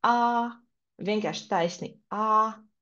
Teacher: pirmais tonis tiek izlasīts kā vienkārši pa taisnu tā skaņa iet